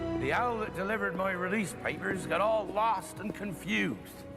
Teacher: One unique feature that you will hear with this accent is that rhotic R.